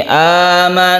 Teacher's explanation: Gunnah musyaddadah. Kita dengungkan tasdid nun ini